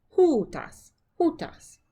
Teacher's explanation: our circumflex accent is on the first syllable